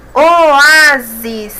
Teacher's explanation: a sílaba a é a mais forte é a penúltima portanto é paroxítona